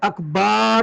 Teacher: بعض لوگ اکبار با کو لمبا کر دیتے ہیں، یہ بھی غلط ہے